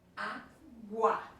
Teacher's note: O U quase que desaparece. O A é muito mais forte. Então o som cresce. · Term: ditongo crescente